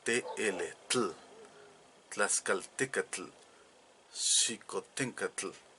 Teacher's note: el sonido de la L era muy clara en la pronunciación del náhuatl clásico, porque Hernán Cortés lo escuchaba así, Tazcaltecal, Xicutengal, él escribía.